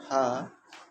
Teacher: काकल व्यंजन हा होता है